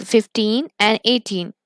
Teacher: the words that end in teen get stress on teen